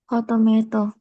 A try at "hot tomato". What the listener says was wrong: Agak tekan sedikit tnya. Agak tekan sedikit tadi. Kurang tekan.